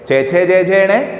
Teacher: यदि हम इस वाली लाइन को बोलते हैं चे, छे, जे, झे और ने, तो यहाँ पर हमारी जो जीवा है, हमारी जो जीवा है वो हमारे तालु को स्पर्श करती है